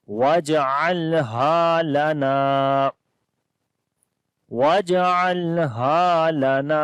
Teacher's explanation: واو کو جیم کے ساتھ ملائیں گے، جیم کے اوپر قلقلہ کریں گے ، عین کو گلے کے درمیان والے حصے سے پڑھیں گے